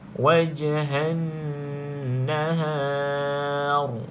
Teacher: Ra ni kita tebalkan, iaitu tafkhim, bacaan tafkhim, sebab sebelumnya huruf berbaris di atas.